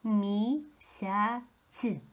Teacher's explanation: тут всі приголосні м'які мі м м'яка приголосна і голосний с м'який приголосний я голосний